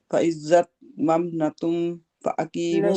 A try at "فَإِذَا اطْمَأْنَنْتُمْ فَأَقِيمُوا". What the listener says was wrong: نہیں، ممنا تم نہیں ہے نا میری بہن، دو میمیں نہیں ہے، یہ غور سے دیکھیں۔ فائزت نن تم تم یہ جو میم کے آگے الف ہے نا جس